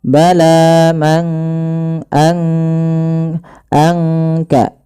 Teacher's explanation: tidak kita baca man kasaba, tapi disamarkan suara nunnya kepada huruf kaf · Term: ikhfa